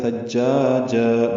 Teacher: ملائیں گے نرمی سے پڑھتے ہوئے، جا الف مدہ، اور پھر جن میں وقف کریں گے تو جا ہو جائے گا، ثجاجا مد عوض بنے گی وقفن، دو حرکات لمبا کریں گے